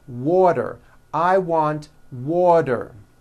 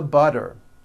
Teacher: the t turns into a d and the whole word is voiced